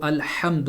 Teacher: ہا جو ہے وہ حلق کے درمیانی حصے سے ادا کی جاتی ہے